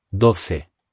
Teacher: The 'o' makes a really short sound here and the c is making the ‘th’ sound again